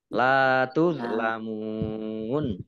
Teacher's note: lam fathah alif matobi'i panjang 2 harokat. Tuzlamun, ingat ini dha bukan dha sukun, bukan qalqalah.